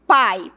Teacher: o A é o mais forte, então é uma vogal. E o I é o mais fraco, é uma semivogal. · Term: ditongo